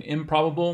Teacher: it changes the place of articulation of the prefix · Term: regressive assimilation